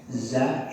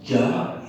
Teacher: Za enteng di lidah. Tapi jim, ja itu tebal.